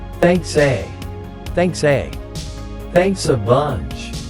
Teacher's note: A very important pronunciation point you need to pay attention to here is the th sound in thanks, thanks, thanks. And the two words, thanks, and a, are also linked together.